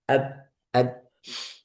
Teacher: Ujung lidah, ujung tepi. menempel pada pangkal gigi seri atas. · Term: Dal